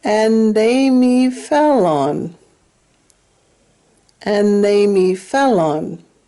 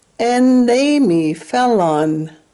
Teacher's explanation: you can say n or end for the word and